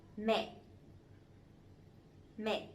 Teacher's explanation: the dấu nặng, the strong tone, so it has to be down and it has to be stronger a little bit